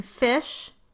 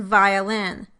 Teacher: the lower lip touches the upper teeth, so the passive articulator is the upper teeth.